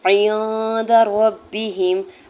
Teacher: ہا کی پیش کو میم ساکن کے ساتھ ملاتے ہوئے پڑھیں گے۔ عند ربہم، عین کی زیر کو نون ساکن کے ساتھ ملاتے ہوئے نون ساکن پہ اخفا کریں گے۔ دال کی زبر کو بغیر کھینچے ہوئے ادا کرنا ہے۔